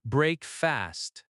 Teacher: Breakfast has stress on break.